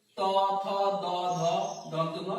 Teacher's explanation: উপরের পাটির দাঁত এবং জিহ্বার ডগার সংস্পর্শে যে ধ্বনিগুলো উচ্চারিত হয় তাকে দন্ত বর্ণ বা দন্ত ধ্বনি বলে। তো এই যে ত থ দ ধ দন্ত ন এগুলো কি, এগুলো হচ্ছে দন্ত ধ্বনি।